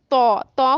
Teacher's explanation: کچھ موٹے حروف ایسے ہیں جن میں ایئر آؤٹ نہیں ہوگی، جیسے تو، تو کو مضبوطی سے ادا کرنا ہے، تو میں ہوا باہر خارج نہیں ہوتی، آپ بے شک آپ تو کو ادا کریں تو یہاں سے ایئر آؤٹ باہر نہیں ہو رہی۔